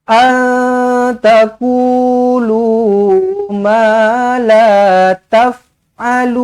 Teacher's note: Nun kosong bertemu ta pun ikhfa hakiki juga. Sama je lidah kita biarkan tergantung, biarkan terapung saja di tengah-tengah. Antakulu ma la taf'alun.